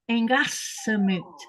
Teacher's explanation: It's just like the two L sounds. It has this noise coming out the sides of your cheek while your tongue is on the roof of your mouth.